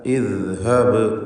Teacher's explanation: ഇവിടെ ഇദ്ഹബ് ഈ പദം വളരെ സൂക്ഷിച്ച് ഭംഗിയായി പാരായണം ചെയ്യുക. ദാലിൻ്റെ ഉച്ചാരണം നാവിൻ്റെ അറ്റത്തിൻ്റെ മുകൾ ഭാഗം മേലെ മുൻപല്ലുമായി ചേർത്ത് അയവോടുകൂടി ഉച്ചരിക്കേണ്ട അക്ഷരമാണ് ഇദ് ഹബ്. ഇദ്ഹബ് ബാഇൻ്റെ സുക്കൂൻ ഖൽഖല സൂറ നൽകി ശബ്ദം ഹറക്കത്ത് പോലെ ചലിപ്പിക്കണം.